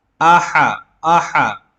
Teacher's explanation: قل هو اللہ، حمزہ زبر آ، اور یہاں پر یہ چھوٹا والا ہا لکھا ہوا ہے، ہا زبر ہا، بلکہ یہ مسپرنٹ کی غلطی ہے، یہاں پر بڑا والا ہا ہے جو حلق سے نکلتا ہے